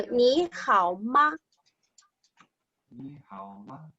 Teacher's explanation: so the ma is very light. So 你好吗？